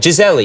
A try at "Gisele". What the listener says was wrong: No, it says Gisele in Portuguese because we say I in the end of the L. Here you eat the I, you know, you only say Giselle. This is the American way, I guess.